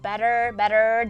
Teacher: Americans use a flap [t], just like... It's similar to our [r] sound in aranha, for example. Just a tap. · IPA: [bɛtər]